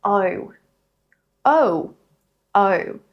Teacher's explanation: In Australian English, as I said before, the lips are flatter.